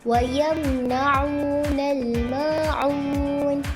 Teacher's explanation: mim sukun bertemu dengan huruf nun, iaitu izhar syafawi, dibaca dengan jelas tanpa dengung